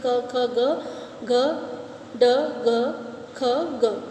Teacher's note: कोमल तालव्य। इन व्यंजनों को बोलते समय जीभ तालु के सबसे पिछले भाग को स्पर्श करती है।